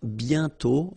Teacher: You write it, but you don't pronounce it. And then the final T is not pronounced.